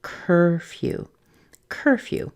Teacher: Curfew begins with the k plus a basic sound, cur. So this would be the same as in words like her and fur, just cur. The few part sounds just like the word few.